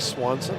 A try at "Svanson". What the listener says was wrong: you swap the W for the V. No. It's not. Very much pronounced.